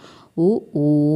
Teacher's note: ഊ എന്ന് പറയുമ്പോൾ ചുണ്ടൊരു വൃത്താകൃതിയിലാണ് വൃത്ത രൂപത്തിലാണ് വറുത്തുള്ള രൂപത്തിലാണ് വരുന്നത് ഉ ഊ എന്ന് പറയുമ്പോൾ ഓ ഓ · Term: ഓഷ്ട്യ സ്വരം